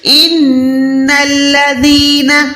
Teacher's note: ان الذین، نون کو لام کے ساتھ ملائیں، نون پہ گننا کریں، لام پہ گننا نہ کریں۔ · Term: نون مشدد